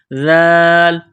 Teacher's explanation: ذال کو نرم کرنا ہے، زبان تھوڑی سی باہر نکالیں گے ذال کو پڑھتے وقت